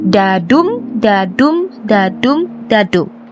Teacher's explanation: This poem consists of 4 iambic feet per line, and each iambic foot consists of 2 syllables, unstressed and stressed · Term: iambic tetrameter